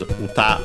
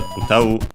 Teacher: uta on its own is accented on the last syllable, while the verb is unaccented